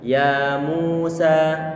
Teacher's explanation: Kemudian mu didomahkan, maka pengucapannya bibir kita monyongkan. Ya Musa. Ya kita buka dengan datar tanpa monyong, kemudian mu kita monyongkan, sa kita buat datar kembali dan dalam keadaan terbuka.